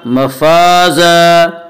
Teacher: इन्ना लिल मुत्तक़ीन मफ़ाज़ा, अलिफ मद्दा, अलिफ हमेशा मद्दा होता है, अलिफ से पहले ज़बर होता है। अलिफ मद्दा को एक अलिफ के बराबर खींच कर पढ़ेंगे।